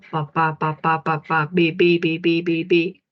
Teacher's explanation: los dos labios articulan y el sonido es bilabial